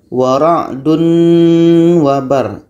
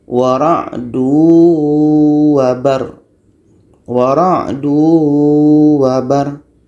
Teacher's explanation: Wara'du wa. Tanwin hilang menjadi masuk ke waw. Kalau kita baca seperti ini, wara'dun wabar, itu idgham belum jadi.